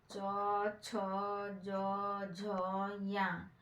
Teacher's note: उच्चारण तालु के स्पर्श से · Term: च वर्ग